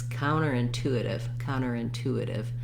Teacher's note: on the tube so counter by itself has first syllable stress in the phrase counter is going to have secondary stress · So the full word together has fourth syllable stress. So thinking about it as a light stress here, counterintuitive. · When I put it all together, counterintuitive, my main stress is on the two.